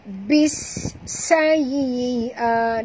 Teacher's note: Jadi kita masukkan bunyi ba baris bawah ini terus ke dalam sin. Bis, bunyikan sofir pada huruf sin yang mati